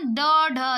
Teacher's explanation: मूर्धन्य व्यंजन वो होते हैं जिनका उच्चारण करते समय हमारी जीभ जाके ऊपर तालू को छू के और मुड़ जाए